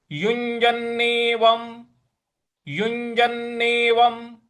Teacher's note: में उसका यु य इस तरह से बोलना है युजननेवम और व के ऊपर जो अनुस्वार है उसको म के उच्चारण में ले आना है · व के ऊपर जो अनुस्वार है उसको म के उच्चारण में ले आना है। तो ये हो जाएगा युंजन्नेवम युंजन्नेवम इस प्रकार से।